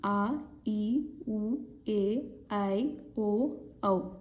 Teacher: ಈ 7 ಅಕ್ಷರಗಳನ್ನ ಉಚ್ಚರಿಸೋದಕ್ಕೆ 2 ಮಾತ್ರ ಕಾಲದ ಅಗತ್ಯ ಇದೆ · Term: ದೀರ್ಘ ಸ್ವರಗಳು